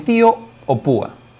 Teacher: se encuentra una vocal abierta y una vocal cerrada y la vocal cerrada lleva a la mayor fuerza de voz como en tío o púa